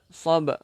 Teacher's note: Sab ni kita kena lantunkan sebab qalqalah.